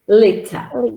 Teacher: Liter, short T and schwa